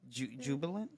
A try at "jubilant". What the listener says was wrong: Not jubilance, but with a T. Jubilant.